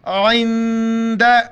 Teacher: اج، را پیش رو، حامیم پیش ہوم، اجرہم، اجرہم، عند، نون ساکن ہے، عین کو گلے سے ادا کر کے نون کی جگہ پر ناک میں آواز پیدا کرنی ہے۔ عین نون زیر عند، زبر د، عند ربہم، را کے اوپر زبر موٹا کر کے با کے ساتھ ملائیں گے، اور جس لفظ کے اوپر شد وہ سختی سے پڑھا جاتا ہے.